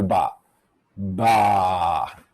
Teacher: vibrating and the lips part so let me do ba ba i can feel the vocal cords vibrating almost as soon as my lips part